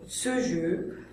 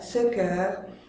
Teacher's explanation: Ça dépend des locuteurs et de leur région d'origine, de leur accent régional. Certains vont le prononcer E fermé, comme ce jeu, d'autres plus ouverts, ce cœur.